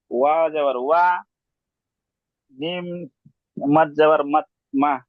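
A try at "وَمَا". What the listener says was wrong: মিম আলিফ মাদ যাবার মা। হামজা পেশ উ। ওমা উ বলে টান দিচ্ছেন,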